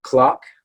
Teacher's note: american english we would say clock okay which is not rounded at all but in british english it would be more like a clock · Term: short o sound, short O sound